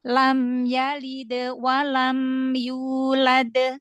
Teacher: kalau yang dal pertama, lam yalid wa, qalqalahnya udah ketutup dengan huruf setelahnya, yaitu wawu, ya kan? Maka dia terdengar suaranya jadi seperti kurang jelas karena dia ada huruf setelahnya.